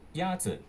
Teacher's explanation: Is pronounced with a first tone. In Mandarin, there are 4 tones, which are essential to distinguish the meaning of words. The first tone is a high, level tone.